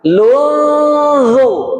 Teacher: Ada nun sukun, lun masuk ke huruf zo. Posisinya lidah sudah bertemu di gigi seri depan. Lunzu. Jadi posisi lidahnya sudah mau mengucapkan huruf zo. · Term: Ikhfa hakiki